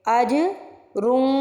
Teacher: چھپا ہوا غنہ، ناک میں نون کی آواز کو چھپانا، اسے کہتے ہیں اخفا۔ تو اج پہ ہم قلقلہ کریں گے، رن پہ ہم اخفا کریں گے۔